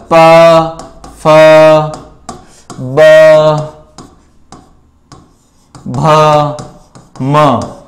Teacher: प फ ब भ म ये पांच वर्ण हैं, ये प वर्ग के अंतर्गत आते हैं। इन पांचों वर्णों का जो उच्चारण है ओष्ठौ, दोनों होठों की सहायता से किया जाता है